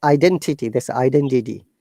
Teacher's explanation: flap t we call it flap d which sounds like kind of d